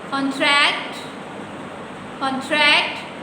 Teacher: इसमें जो स्ट्रेस है वो ट्रैक्ट पे है